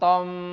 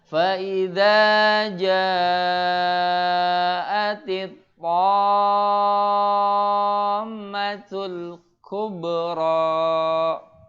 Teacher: Dengungnya yang bukan dengungnya yang panjang. Tapi huruf to-nya yang panjang. Antum bacanya tom. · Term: mad lazim kilmi musaqqal